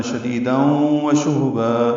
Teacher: با الف مدہ مد عوض ہو جائے گی، دو حرکات لمبا کریں گے